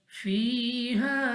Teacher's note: या साकिन से पहले ज़ेर या मद्दा खींच कर पढ़ेंगे